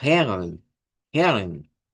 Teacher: el acento que se usa en Austria o en la zona sur de Alemania se parece más a la R del español, a la R suave, no la R fuerte, la R suave.